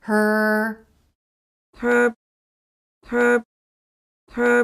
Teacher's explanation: out that it's the r sound that's being held her again it's the r vowel consonant combination just think of it as a single R sound it's not her but her right from H and R her